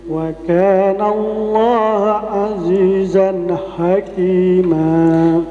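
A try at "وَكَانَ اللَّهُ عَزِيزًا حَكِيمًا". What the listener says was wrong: Wa kana Allahu, bukan ha, ya.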